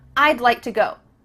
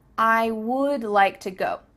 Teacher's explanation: to go do you see how we can speak quicker because we're cutting off all the sounds in the word wood except for that final D